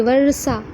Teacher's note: र का उच्चारण थोड़ा सा हो रहा है और सा का उच्चारण अ के साथ मूर्धन्य स का उच्चारण